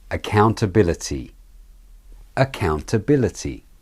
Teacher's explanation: the count syllable being the main stressed syllable the vowel is said slightly longer and with slightly higher pitch